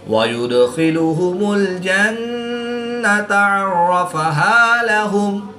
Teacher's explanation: خا حروف مستعلیہ میں سے ہے جس کو پر یعنی موٹا پڑھیں گے۔ را مشدد پر زبر ہے تو را کو پر یعنی موٹا پڑھیں گے